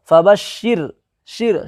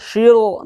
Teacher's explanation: فبشر، شر، شیر نہیں بولیں گے، شر بولیں گے، شر یعنی را کو باریک کریں گے